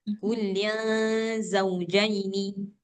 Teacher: Ikhfa. Iya, jadi suara nunnya jangan jelas seperti idhar, harus samar-samar